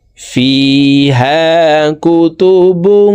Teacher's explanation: তানউইনের পরে ইকফার হরফ কফ আসছে, এই কারণে তানউইনওয়ালা বাটি নাকের ভিতরে লুকাইয়া গুন্নার সহিত পড়ব। ফিহা কুতুবুং। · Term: ইকফা গুন্না